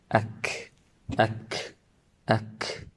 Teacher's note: So when a person pronounces the kaf and the ta, there will be hams and there is shidda. So hams, there is a flow of breath, and shidda, you need to imprison the sound